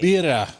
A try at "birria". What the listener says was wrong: Birria. You gotta roll your R's.